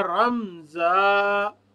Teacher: زا کی آواز جو ہے اس میں بھی سیٹی پائی جاتی ہے، تیزی پائی جاتی ہے